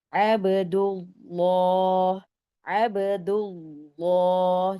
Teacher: Jadi lafaz Allahnya tebal. Jadi lam itu sifatnya adalah tipis aslinya ya, tapi dalam khusus untuk lafaz lafzul jalalah, lafaz Allah, lam dibaca tebal dalam dua keadaan.